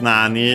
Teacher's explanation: Here with accent on the na, on the first syllable.